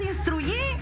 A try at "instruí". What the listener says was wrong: No, instruí. Sin Y. Instruí.